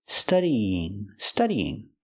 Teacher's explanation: study plus the ing you have to link the vowels study there's a y sound a light Y sound linking the two vowels